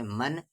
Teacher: نون ساکن کی آواز صاف صاف پڑھی جائے گی کیونکہ نون ساکن کے بعد خا ہے